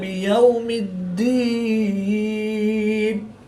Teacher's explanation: دال مشدد ہے تو یہاں پر قلقلہ کبرا کر کے پڑھیں گے